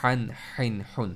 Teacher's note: हन को पढ़ते वक्त आपकी आवाज़ में सख्ती, सांस को निकलने में मुश्किलात, ये आप जब तक महसूस ना करें उस वक्त तक आपने छोड़ना नहीं है। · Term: मिडिल थ्रोट लेटर